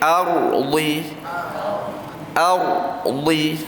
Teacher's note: Dia akan bunyi macam ra, ardi. Ra tebal, tapi huruf a tu sifatnya ringan. Itu dia tak tebal.